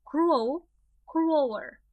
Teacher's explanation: And again, pay attention to the stress. It's always on the first syllable.